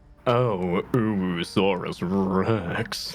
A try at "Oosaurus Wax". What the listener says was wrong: No, it's Wex, not Rex. Wex. Oosaurus Wax.